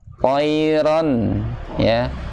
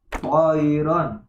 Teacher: to juga mempunyai sifat isti'la, yaitu naik pangkal lidahnya tebal. Itbaq juga.